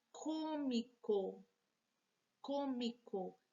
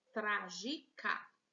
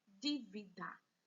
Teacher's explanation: Todas elas possuem a antepenúltima sílaba mais forte. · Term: proparoxítonas